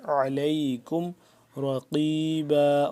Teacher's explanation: علیکم، عین زبر ع، عین کو حلقے درمیان والے حصے سے ادا کریں گے تھوڑا سا کھچاؤ پیدا کر کے، علیکم رقیبا، را موٹا قاف موٹا، رقیبا، رقیبا نا.